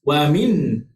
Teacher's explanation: Sifat nun yang mati, lidah kita itu letakkan langit. Wa minha. Tak boleh dengung sama sekali sebab dia izhar halqi.